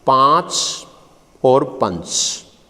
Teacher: तो दोनों में समानता ये है कि दोनों के ही उच्चारण में नासिका की सहायता ली जाती है, इसलिए दोनों ही नासिके ध्वनियां हैं